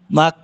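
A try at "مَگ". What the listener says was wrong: মা গই, এটা হচ্ছে গাফ, ঠিক আছে। গই এর মতো, গাফ।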